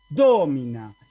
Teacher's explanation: en domina como la y es breve el acento acá en la anterior en la antepenúltima